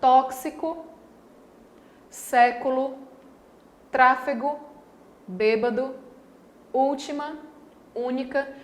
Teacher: veja que nessas palavras a tonicidade recai sobre a antepenúltima sílaba aqui está antes da penúltima então é uma palavra proparoxítona certo